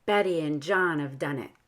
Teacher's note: we stress betty and john because they aren't pronouns